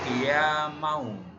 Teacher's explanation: Maka kiyaman dibacanya menjadi kiyamau, idgham biguna, membacanya berdengung dimasukkan pada huruf wawu